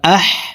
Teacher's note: হা হরফকে হলকের মধ্যখান থেকে উচ্চারণ করব কারণ হার মাখরাজ হলকের মধ্যখান থেকে হবে